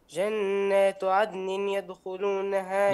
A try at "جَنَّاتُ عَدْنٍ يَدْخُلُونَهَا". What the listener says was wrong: لا عندنا شوف التنوين إذا بعده الياء حكمه الإدغام بغنة. جنات عدن يدخلونها، لا مش عدن، لا تظهر النون هنا، النون تضغمها في الياء.